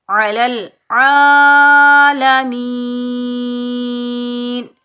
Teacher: وقف کی صورت میں نون کا زبر ختم ہو جائے گا، نون پر ہم عارضی جزم لگائیں گے، نون ساکن ہو جائے گا، یہ وقف ہوگا وقف بالاسکان۔